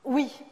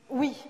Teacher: un oui un peu plus marqué, un peu définitif, presque solennel, avec une petite fricative finale, d'ailleurs, un wish.